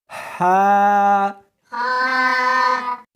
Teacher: اس کو حلق میں سے نکالنا ہے اور ساتھ میں ہوا بھی ہونی چاہیے۔ ہا، ہا نہیں پڑھنی بلکہ اس کو حلق میں سے نکالنا ہے، سینے میں سے نہیں نکالنا۔